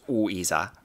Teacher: this is not a diphthong. These are actually separate syllables